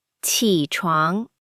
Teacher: 床 is second tone, rising, like asking a question.